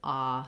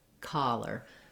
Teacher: So that's typical in American English that when we have an O, it can say O, but also very often it says this open, unrounded ah sound. That's also true here in collar. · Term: ah vowel